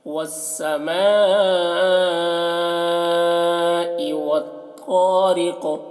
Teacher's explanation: یہ واو کو سین سے ملا کر پڑھیں گے، یہ الف اور لام کو نہیں پڑھا جائے گا۔ والسماء، میم میں مد ہے تو اسے زیادہ کھینچیں گے۔ والسماء والطارق، یہاں پر بھی واو کو طا سے ملا کر پڑھیں گے، الف لام کو نہیں پڑھیں گے، اور تو کو موٹا کر کے پڑھیں گے۔